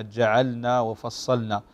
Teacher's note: فهنا نظهر اللام، لأنه اللام مخرجها قريب من مخرج النون، فتدغم، تدغم لحنا في النون إذا جاءت مثل هذه الكلمة جعلنا وفصلنا.